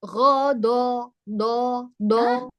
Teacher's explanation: huruf dot makhrajnya yang ditekan sisi lidahnya, sisi lidah kanan atau kiri atau kedua-duanya ditekan ke bagian dalam gigi geraham atas. Ya, gitu. Jadi yang ditekan yang sisinya, ujung lidah hanya menempel.